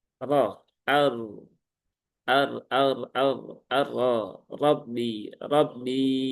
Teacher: dan roknya tafkhim ya, tebal